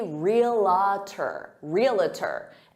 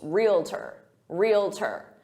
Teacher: Our next word, this is one that is debated by native speakers because some native speakers add an extra syllable and they say realtor, realtor, and they say it with 3 syllables, realtor, when in fact it's 2 syllables, realtor, realtor. So if you hear a native speaker say realtor, just know that that's an alternative pronunciation, but some people get really annoyed by it, some native speakers.